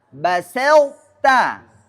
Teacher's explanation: Nah basta di sini sinnya tidak boleh berubah menjadi shad. Ah karena ada yang baru belajar itu biasanya ada yang dirubah basta salah atau yang dirubah tanya jadi th basho ah dua-duanya salah.